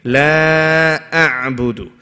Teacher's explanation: the la should be long, at least 4 counts